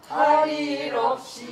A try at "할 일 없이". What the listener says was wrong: 아니야 없이 하고 내리는 게 아니야 할 일 없이 선인들을 없이 내리지 말고 할 일 없이 선인들을 이거는 도섭창이기 때문에 우리가 소리에서 거치는 그런 목으로 하는 게 아니에요. 글을 읽듯이 하는 데다가 곡조를 붙인 거라서 많이 중간중간이 생략되고 도섭창조가 있는 거예요.